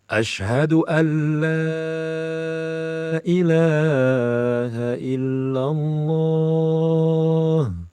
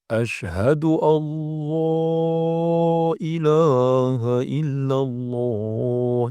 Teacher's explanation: nun sukun ini melebur menjadi lam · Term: idgham Kamil bila ghunah